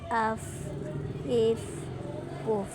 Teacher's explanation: جب نیچے والے ہونٹ کا گیلا حصہ اوپر کے دانتوں کے سرے سے لگے، بہت ہلکے سے لگانا ہے۔ جیسے اف، ایف، اوف۔ · ہوا نکلتی ہوئی محسوس ہوتی ہے، آواز چلتی ہے، باریک لیٹر ہے۔